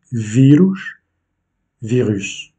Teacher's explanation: l'accentuation est faite sur le i